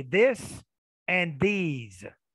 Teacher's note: when i said this i was having them pay attention to the tongue being inserted in between the teeth that's an interdental consonant